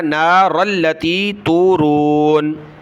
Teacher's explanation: افرأیتم النار، تا پیشتو، میم کو نون کے ساتھ ملایا، تم النار التی، را کو لام کے ساتھ ملایا، نار التی تورون.